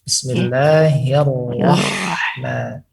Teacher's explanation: Huruf ha-nya sudah tepat, ternyata kena huruf ra-nya pada yang sekarang ini. Ra kita fokuskan kepada lidah, ujung lidah menempel kepada gusi.